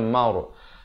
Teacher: Id amar, ra-nya jadi tebal.